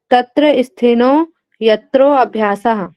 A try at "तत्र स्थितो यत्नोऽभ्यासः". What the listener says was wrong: स्थिनो नहीं है, ता का उच्चारण है, आप थोड़ा सा गौर कीजिएगा, वहां पे ता लिखा हुआ है। मैम कंचन मैम आप ध्यान दीजिएगा, वहां पे लिखा हुआ है तत्र स्थितो, ता का उच्चारण है।